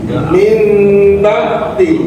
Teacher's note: Min ba'di. Ada na mati depannya huruf ba. Maka ini na-nya berubah menjadi apa? Mim.